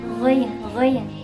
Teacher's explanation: Keluarnya dari tenggorokan, itu makhrajnya dari tenggorokan paling atas.